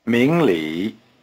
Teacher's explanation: Notice that the tones are rising low.